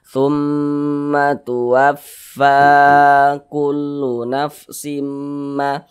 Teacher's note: Sehingga fa dibaca panjang. Mad tabi'i panjang 2 harokat. 2 harokat kira-kira sepanjang 2 ketukan.